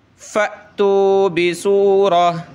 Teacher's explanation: فأتو بسورہ، یا میں آگے ملانا ہے لیکن میں یہاں کھڑا ہو گیا، یعنی جب وقف کریں گے تو یہ گول تا ہا بن جاتی ہے